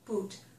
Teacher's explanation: that's a tense vowel, so the muscles are tight. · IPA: / u /